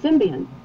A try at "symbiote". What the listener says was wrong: There's no N in there. It's symbiote.